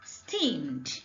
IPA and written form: sti:md (steamed)